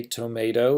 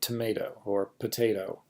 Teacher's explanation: I can say tomato and you hear the O after the T, but I can also say tomato or potato, where I have a little vocalic something after the first letter, but it doesn't really sound like an O at all, and that's what a vocal shava is.